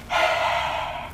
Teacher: basically a voiceless vowel sounds like the vowel that's coming after a letter H. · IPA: ə̥